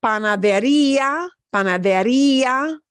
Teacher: here we're punching the E sound more than the A sound.